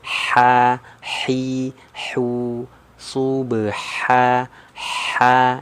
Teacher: jadi ha-nya ha kecil, tipis ya. Anginnya keluar.